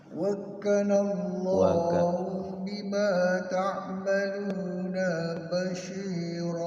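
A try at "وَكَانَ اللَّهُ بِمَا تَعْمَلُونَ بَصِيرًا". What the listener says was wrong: Awas, naknya pendek, kalau nggak ada tanda panjang jangan dipanjangin. Wa kana Allahu bima ta'maluna basira.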